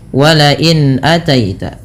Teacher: Jelaskan pada lafal bunyi huruf nun yang disukunkan ketika bertemu dengan huruf hamzah. Wala in ataita, dan jangan ditahan lama-lama karena ia bacaan izhar halqi yang dimana izhar berarti jelas.